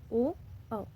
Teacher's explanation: कंठ और ओष्ठ यानी कि कंठ और होंठ से स्पर्श करते हुए जो ध्वनि निकल रही है वो है ओ, औ